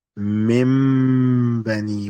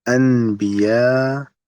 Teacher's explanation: The noon changes into a meme and you read with ghunna, the nasal sound.